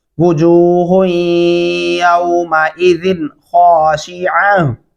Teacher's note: गुना नहीं होता, क्योंकि आगे हरूफ हल्की में से खौ आ चुका है